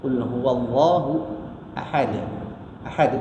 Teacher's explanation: bunyi lantunan yang kuat daripada makhraj ekoran bacaan huruf bertanda sukun makhrajnya ditekan terlalu kuat dan dilepaskan dalam waktu yang singkat. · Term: qalqalah